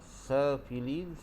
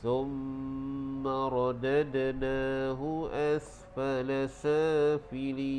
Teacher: sa dibaca dengan mad asli 2 harkat, dan bila waqaf menjadi mad arid li sukun. Jadi kita panjangnya 6 harkat.